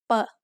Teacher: blah blah blah as an initial consonant is ba which is in the middle between a regular english b and p we can also call this an unaspirated p